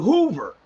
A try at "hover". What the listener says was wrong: Hover, nigga, hover. Not Hoover, hover.